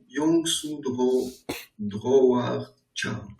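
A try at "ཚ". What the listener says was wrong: Cho, ici c'est un cho. Hein, quand tu dis do, on entend le verbe aller. Alors que c'est cho, chowa.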